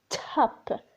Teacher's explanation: With the T, you feel like there is a puff of air. Top. This puff of air, we put it as a small h above the T.